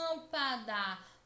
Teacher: Percebam que a sílaba que mais demora a ser pronunciada é lã. Lâmpada. Portanto, lã é a sílaba tônica.